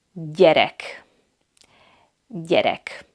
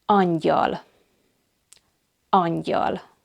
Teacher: It's a palatal sound, like the letter Ny, Ny.